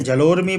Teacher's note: यहाँ पर जल और उर्मी मिलकर के जलोर्मी बनाए, क्योंकि यहाँ पर अ और दीर्घ उ, ह्रस्व अ और दीर्घ उ मिलकर के ओकार बना दिए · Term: गुण संधि